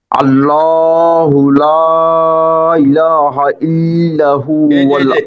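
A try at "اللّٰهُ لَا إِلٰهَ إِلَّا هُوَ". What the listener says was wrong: আল্লাহ এখানে এসে আবার ড্রপ করছেন এখানে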